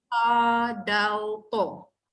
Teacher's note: hujung lidah ke gusi atas